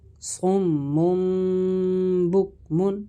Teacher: ہم نے صمم میم سے بدل کر اخفا کیا، غنہ کر کے پڑھا